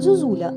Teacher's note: з наближенням чи уподібненням до інших голосних звуків наприклад зозуля де ненаголошений звук о наближується до у